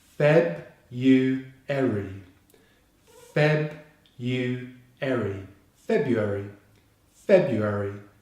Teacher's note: February, February, with the stress on the first syllable.